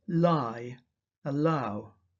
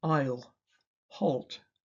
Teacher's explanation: The phoneme l has two allophones. Before a vowel, its pronunciation is clear l. While before a consonant or pause, it is dark l. So, the sound is clear in lie, allow.